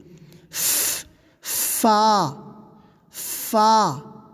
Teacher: اس طرح سے۔ فا کو جو ہے منہ کھول کر اور سب سے پہلے پھسپھساہٹ کی آواز شروع میں